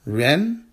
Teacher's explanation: Ren is a fourth tone character it's a falling tone